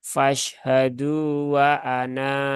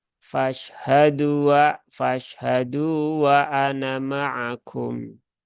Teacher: Tetapi kalau dia wakof, ya, wakof di sini, eh, wakof pada lafat ana, maka dia dibaca panjang dua harokat.